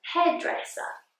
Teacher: has the schwa at the end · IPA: /heədresə/